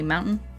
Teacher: have you ever realized that you don't pronounce hard consonants? Like all your T's disappear?